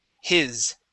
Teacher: instead of he's he's and using an e sound we want to use a short I